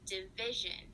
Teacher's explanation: So you said the vi in division is the correct syllable that gets stressed.